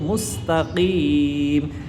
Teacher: কফ হরফটা জিহ্বার গোড়া তার বরাবর উপরের তালুর সঙ্গে লাগে আর মোটা করে উচ্চারণ করব